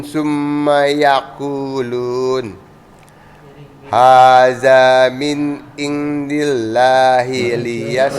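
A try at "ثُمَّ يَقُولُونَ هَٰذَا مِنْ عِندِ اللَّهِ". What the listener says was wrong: Potong-potong, Mbak. Jangan dipotong-potong. Summa yaquluna, langsung baca aja, enggak perlu dipotong-potong.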